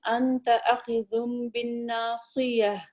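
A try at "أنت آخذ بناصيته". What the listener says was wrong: انت آخذ بناصیتہ، یہ بن نہیں ہے نا، یہاں نون پہ شد نہیں ہے،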